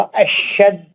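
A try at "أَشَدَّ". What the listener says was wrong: जाल पे है, शीन पे नहीं है. अशद्द, अशद नहीं, अशद्द.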